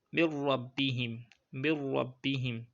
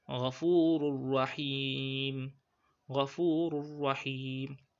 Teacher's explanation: you just pronounce it while inserting the tenwin or the nun into the letter, without ghunnah.